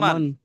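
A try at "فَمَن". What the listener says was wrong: ফা টানবেন না, ফামান। মিমের ওপরে জাবার আছে। জি, নুনের ওপর সাকিন আছে, তাকে নুন সাকিন বলে।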